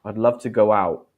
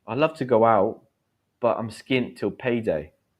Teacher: You can say out, but it's more natural if you drop that final T.